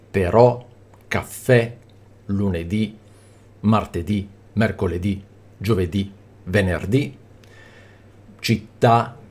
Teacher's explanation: le parole tronche con l'accento sull'ultima sillaba